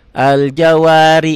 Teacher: ri-nya tipis karena barisnya di bawah